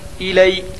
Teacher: یا لین کو نرم آواز کے ساتھ جلدی ادا کریں اور معروف پڑھیں